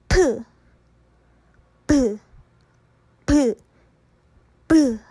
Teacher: 브 했을 때 공기를 일단 순간적으로 아주 짧은 시간 동안 막는 거예요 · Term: 파열음